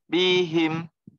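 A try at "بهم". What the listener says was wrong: Jangan bihim, jangan nambah mad. Bihim.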